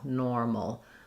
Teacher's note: So in normal, I have the true or sound there, and my MAL, no vowel, mol. It's just a reduced little syllabic L